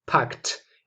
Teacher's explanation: It's pronounced with T. Because we have a K at the end, and that's an unvoiced sound